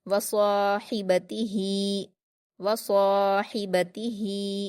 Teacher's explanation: last वाले हा को हम सीने की तरफ से अदा करेंगे और जो बीच वाली हा है उसे दरमियानी हलक से अदा करेंगे